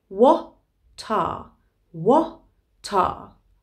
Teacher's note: the T of what has actually moved over to the next word, are.